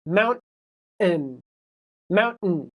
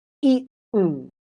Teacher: when you get to the T, you stop all of the air and all of the sound coming out of your mouth.